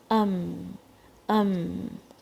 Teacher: Sound is going through the نوز, خیشوم میں آواز جا رہی ہے, اور جو ساؤنڈ ہے وہ خیشوم کو استعمال کر کے, اور جب بھی اس کے اندر جو صفت ہے غنہ کی وہ اسی سے آتی ہے, جسے کوئی اور ایگزٹ نہیں مل رہی ہے.